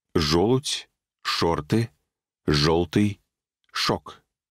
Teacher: в каждом из слов под ударением после шипящей мы услышим звук о вне зависимости от того какая буква будет на письме